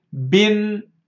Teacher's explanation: The first كسرة is كسرة here, B. The second كسرة is not a vowel. This second كسرة is a hidden نون ساكنة.